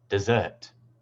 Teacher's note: in this word, the primary stress is on the second syllable.